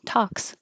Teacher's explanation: talks, not pronouncing the L, just talks